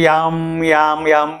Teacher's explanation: राम म्हणता येत नाही, ते याम याम याम यायला लागतं, रच्या जागी यायला लागतं